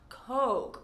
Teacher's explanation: make sure that that O sound is nice and long, Coke, or else you will again be saying a slang word for a man's private parts.